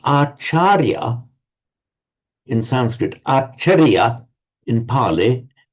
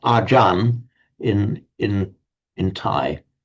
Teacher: The Thais often drop off the final syllable when they're pronouncing it in Thai.